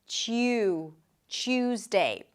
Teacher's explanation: When you pronounce a T sound and then a Y sound, what happens to the T is that it changes a little bit and becomes a ch sound, like a T and a sh sound.